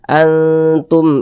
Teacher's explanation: hurufba bukan huruf mim Tapi huruf hamzah maka hukumnya izhar syafawi nah baca jelas tak berdenggung pendek saja · Nah, baca jelas, tak berdengung, pendek saja.